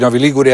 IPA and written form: ˈnɔvi ˈliɡure (Novi Ligure)